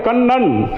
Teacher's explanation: உங்க நாக்கு எப்படி போச்சு பல்லுக்கு அடியில முதல்ல தொடும் கண் அப்புறம் பின்னால போய்